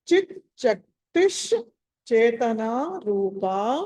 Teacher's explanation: ఆ విసర్గ స్థానంలో శకారం వస్తుంది